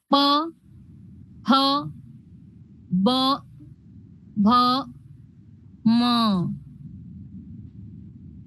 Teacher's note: करताना आपल तोंडस पूर्ण बंद होणार आणि खुलणार ठीक आता बघा प ओटांचा संपर्क येतो एकमेकाशी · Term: प चा वर्ग